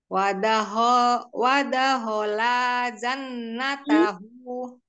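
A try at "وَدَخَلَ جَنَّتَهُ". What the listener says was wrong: La-nya enggak boleh diayun, pendek semua Umi.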